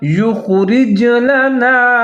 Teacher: خا ساکن ہے، خا کو موٹا کر کے پڑھنا ہے، یا کے ساتھ ملا کے پڑھیں گے